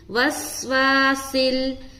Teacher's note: سین کی آواز آئے گی سٹی کی